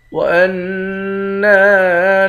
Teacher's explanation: حمزے کو نون مشدد کے ساتھ ملا کر نون پر غنہ کریں گے۔ نون کے بعد الف ہے، الف حرف مدہ ہے، ایک الف کی مقدار کھینچیں گے۔